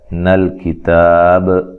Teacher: کاف تا با تینوں کو باریک پڑھنا ہے، لام کو ہلانا نہیں ہے، اور وقف کی صورت میں مد کر سکتے ہیں، یہ مد اصلی ہے تو لمبا کر کے وقف کر سکتے ہیں۔